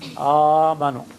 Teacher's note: But the phonetic rule, one of the phonetic rules of Arabic is hamza maftuha followed by hamza sakina becomes ah. Yes, second hamza is dropped and the first hamza, the fatha becomes alif. Amanu is compensatory lengthening.